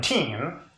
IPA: tʰim